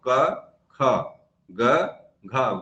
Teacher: क और ग और अंग में सास का प्रयोग कम हो रहा है इसलिए अल्पप्राण है और ख और घ में सास प्रयोग ज्यादा होने के कारण जो महाप्राण